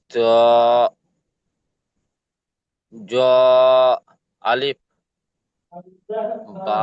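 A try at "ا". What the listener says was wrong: জ নয় ও ভাইজান এটি জ নয়, আলিফ। জি এটি ত হবে, জ হতে গেলে উপরে একটি নোক্তা হতে হবে তবে জ হবে। আলিফ।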